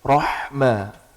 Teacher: Ha itu tengah kerongkongan, roh bukan roh, tapi roh dari tengah.